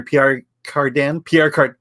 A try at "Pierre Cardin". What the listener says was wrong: Pierre Cardin. Pierre Cardin, you don't pronounce the N.